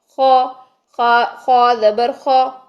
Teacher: जो आ की साउंड थी उसकी जगह पे हमने अब बोला है अ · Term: मोटे हरूफ